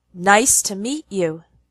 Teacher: The pattern in the sentence nice to meet you is strong, weak, strong, weak. · You can hear that the words nice and meet are stronger. We put more emphasis on them. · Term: strong and weak words